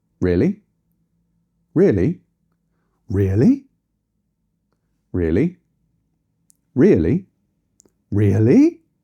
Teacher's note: We can actually increase the melody on the question to help ourselves sound even more disbelieving.